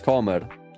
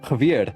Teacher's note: And a thing with Afrikaans, all R's are trilled. · I didn't trill my R's, I just tapped them.